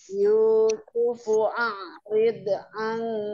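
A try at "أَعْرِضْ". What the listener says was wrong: hadith a'rid jangan dipantulkan itu bukan kol-kolah jangan a'rid ya tidak a'rid tidak dipantulkan a'rid oh,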